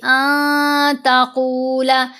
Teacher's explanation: نون ساکن ہے نا، اس کے بعد ہے تا، تو ہم نے نون کی آواز کو ناک میں چھپا کر پڑھنا ہے